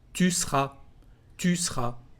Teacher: Tu seras to translate you will be. And again, you can remove the sound e in the verb